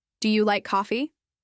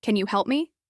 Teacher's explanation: These usually have a rising intonation at the end because you are expecting a yes or no answer.